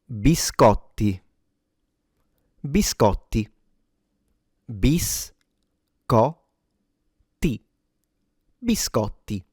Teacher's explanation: the t is double. So not only you have to pronounce it like a t but also yeah it has to be stronger or longer. So biscotti rather than biscotti.